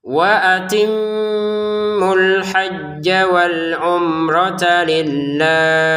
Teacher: Waimmu sebenarnya dua harakat karena ada sukun menjadi tidak panjang.